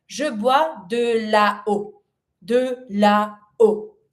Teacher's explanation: And if I keep that between my la and my o, water, there's a break because I have two vowels that I do pronounce, so I need to make a break to pronounce everything.